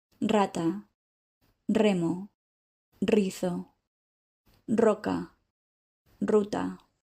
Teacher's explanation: Whenever the R consonant sits at the beginning of a word and is followed by a vowel, you will need to use the stronger rolling R sound